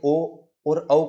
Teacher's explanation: अ का आपका कंठ है और उ का आपका ओष्ठ था मेरे भाई क्या था ओष्ठ था तो ये जब बना ही दो स्वरों से अलग-अलग विजाति के स्वरों से तो इसका उच्चारण स्थान भी क्या होगा उसी प्रकार से इसका उच्चारण स्थान होगा जैसे ओ और औ का उच्चारण स्थान क्या है कंठोष्ठ यानी कंठ प्लस ओष्ठ है